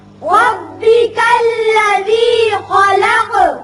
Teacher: وقت کی صورت میں خلق قاف ساکن ہو جائے گا اور اس کی صفت قلقلہ ادا کریں گے